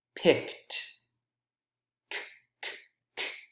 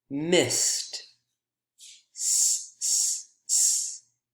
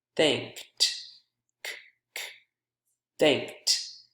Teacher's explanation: These EDs all sound like T because the consonant sound that comes before them is voiceless